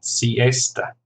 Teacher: siesta, 3 syllables, stress on the second